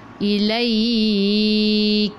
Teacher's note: kaf bila berhenti kena ada sedikit angin sebab sifat hurufnya hamas